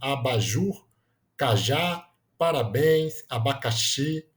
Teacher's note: a sílaba tônica é sempre a última, né? É a mais forte. Então, elas são oxítonas.